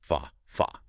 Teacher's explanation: it sounds incredibly open. You have to physically drop your jaw to produce that. It is an active opening of the mouth. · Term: Fatha